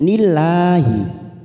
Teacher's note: lam jalalah yang didahului kasr kita baca tipis